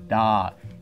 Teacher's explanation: You can feel that it's right behind your teeth, maybe touching, maybe not touching your teeth.